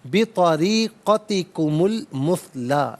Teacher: اسے المثلا کی لام ساکن کے ساتھ ملائیں گے، درمیان میں سے الف یعنی حمزہ کو حذف کیا جائے گا۔ طریقتی میں را کے نیچے زیر ہے، را کو باریک کر کے پڑھا جائے گا۔